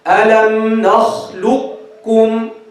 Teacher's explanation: Drop the first, stress the second. Drop the qaf completely, stress the kaf. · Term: idgham